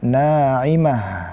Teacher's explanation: Kita kasih ha rikhawahnya artinya mengalir suaranya dan juga ee hamesnya naimah mengalir ee nafas.